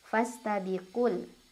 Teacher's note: ku-nya dibaca pendek langsung ke lam.